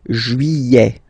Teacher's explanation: Don't pronounce this final T, E-T here at the end.